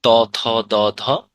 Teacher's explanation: ত বর্গীয় হচ্ছে তোমার যেগুলো দাঁতে লাগে।